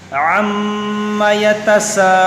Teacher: یہاں میم میں غنہ کریں گے، میم مشدد ہے اور یہاں مد متصل ہوگا، یعنی کھینچیں گے اس کو